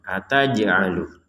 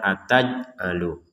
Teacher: Ada jim sukun kita pantulkan.